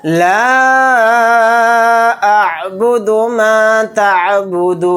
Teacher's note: یہاں پر مد منفصل کا قاعدہ ہو رہا ہے، کیونکہ الف مدہ کے بعد حمزہ دوسرے کلمے میں ہے الف کی شکل میں، تو اس لیے یہاں پر مد منفصل کا قاعدہ ہوگا۔ اس مد کو ہم 3 الف کی مقدار کھینچ کر پڑھیں گے۔